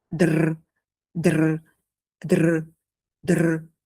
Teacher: Laisse seulement le D devenir un petit tremblement, comme si la langue faisait plusieurs petits contacts très rapides.